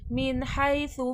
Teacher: मिन में यहाँ पर इज़हार हल्क़ी का क़ायदा हो रहा है।